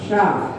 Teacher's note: जब हम सीटी वाला शा बोलते हैं तो हमारी जीभ तालू से लगती है शा। और जब हम सरोता वाला सा बोलते हैं, जैसे सागर बोलेंगे तो हमारी जीभ दांत से लगेगी, इसे दंती सा कहते हैं, सागर।